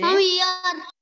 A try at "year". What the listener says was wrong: Ear, ear. Not ear. Not ear. Year. हल्की सी ईयर की आ जाती है.